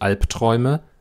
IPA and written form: ˈalptʁ̥ɔɪ̯mə (Albträume)